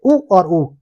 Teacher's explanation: ओष्ठ के आधार पर जो स्वर आएंगे वह होते हैं उ और उ। उ छोटी उ और बड़ी ऊ।